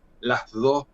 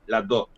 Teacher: Lo que hacen es reforzar esa D que antes era fricativa. Para nosotros es fricativa, decimos las dos. Ellos lo que hacen es pronunciarla como oclusiva, las dos.